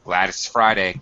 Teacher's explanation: Glad it's Friday, and we've basically dropped the T in it's. Glad it's Friday. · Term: reduced form